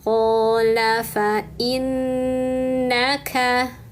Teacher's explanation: ini nunnya bertasydid, tahan dan dengungkan 3 harokat.